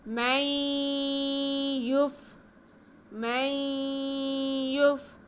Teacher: نون ساکن کے بعد یا آ جائے تو ہم نون کے بعد کو یا میں ملا کے پڑھتے ہیں، ایک الف کے برابر غنہ کرتے ہوئے۔ من یف، من یف، ادغام بالغنہ ہے، یہ نون ساکن کے بعد یا آئے تو ادغام بالغنہ ہوتا ہے۔